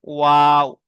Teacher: দুই ঠোঁট না মিলিয়ে মাঝখান থেকে উচ্চারিত হয় ও।